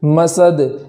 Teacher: یہاں دال کو قلقلہ کے ساتھ پڑھیں گے ، اس لیے کہ وقف میں یہاں جزم کے ساتھ پڑھیں